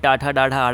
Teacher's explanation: टा वर्ग में टाठा डाढ़ा आड़ा आता है, इसको बोला जाता है मूर्धन्य।